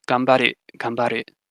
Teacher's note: because the B is a bilabial, that nasal assimilates and becomes a bilabial nasal